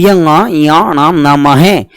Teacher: इनका उच्चारण नाक से भी होता है, अपने अपने उच्चारण स्थान से भी होता है। तो मैं आपको पहले बता दूं, इन्हें द्विस्थानीय व्यंजनों के नाम से भी जानते हैं।